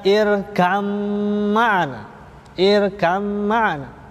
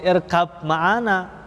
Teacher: Huruf ba-nya hilang menjadi huruf mim, makanya mimnya bertasydid, mempunyai tempo dengung 2 harokat.